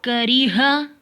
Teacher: काफ बारीक है, रा भी बारीक है, क्योंकि इसके नीचे ज़ेर आई है